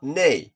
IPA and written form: neɪ (Canadian)